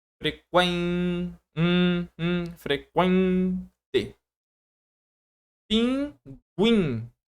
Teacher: o U se pronuncia mais baixo que o E. O E é uma vogal, o U é uma semivogal, e o N tá me trazendo aquele som nasal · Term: ditongo nasal